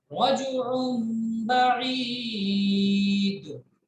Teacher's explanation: तनवीन के बाद अगर बा आता है तो तनवीन में जो नून की आवाज होती है उसको मीम से बदलते हैं, गुन्ना करके पढ़ते हैं। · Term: कल्ब